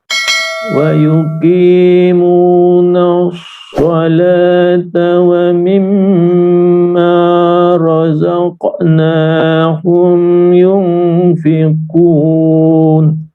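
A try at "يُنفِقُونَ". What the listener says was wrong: Baik, yunfiqun sedikit ditahan lagi, sedikit panjangkan lagi.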